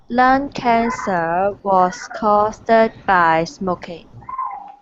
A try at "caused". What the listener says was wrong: First of all, pronunciation. Caused, one syllable. Caused. Not caused. Caused.